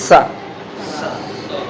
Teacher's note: दंती माने हमारी जीभ जब दांतों को टच करते हुए सा बोलेगी तो वो दंती सा कहलाएगा।